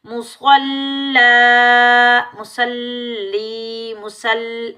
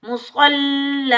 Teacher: यहाँ हम वक़फ़ करेंगे तो दो ज़बर की तनवीन में से एक ज़बर हटा देंगे और एक ज़बर के साथ अलिफ मद्दा में बदल कर पढ़ेंगे